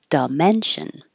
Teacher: most American English speakers are going to change the di to a duh